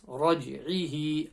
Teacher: ayn from the middle of the throat. Raj, ra full mouth letter.